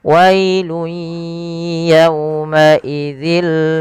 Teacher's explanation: Pada lafal yau lembutkan karena dia waw, sambil monyongkan sedikit huruf wawnya, menyempurnakan makhrajnya.